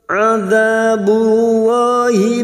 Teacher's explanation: fathah bertemu Alif Mad Thobi'i dua harakat kita panjangkan